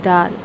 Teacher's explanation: زبان کی نوک جب ثنائے اولیہ کی جڑ کو لگے تو دال ادا ہوتا ہے